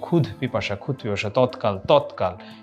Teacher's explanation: দ ও ধয়ের জায়গাতে অঘোষ অল্পপ্রাণ ধ্বনি হয়